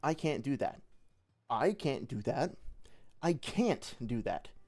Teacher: every time I said that I put an emphasis on a different word